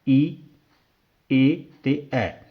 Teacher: ਇਸਦੇ ਵਿੱਚ ਈ ਏ ਤੇ ਐ ਸਵਰ ਧੁਨੀਆਂ ਨੇ ਜਿਹੜੀਆਂ ਉਹ ਜੀਭ ਦੇ ਅਗਲੇ ਸਥਾਨ ਤੋਂ ਉਚਾਰੀਆਂ ਜਾਂਦੀਆਂ ਨੇ